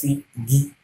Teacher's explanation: G is a velar sound. That is, back of your tongue is touching your velar.